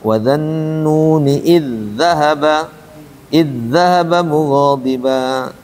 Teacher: Jadi zalnya langsung ke zal yang kedua. Itu namanya idgham kamil.